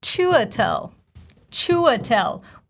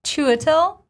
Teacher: We're stressing the very first syllable.